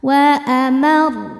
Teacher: Dan ro-nya karena bertasydid, kita ingat-ingat ketika kita berhenti di huruf bertasydid yang bukan huruf qalqalah, baju di toko, bukan huruf gunnah, nun dan mim, maka cara bacanya adalah pakai nabar, naikkan intonasi suara kita.